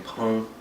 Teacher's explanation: But in 朋友, it's like this G is kind of silent. You're just saying 朋. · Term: nasalized sound